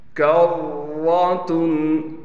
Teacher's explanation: را پر تشدید ہونے کی وجہ سے تھوڑا ٹھہراؤ کیا جائے گا اور را کو موٹا پڑھیں گے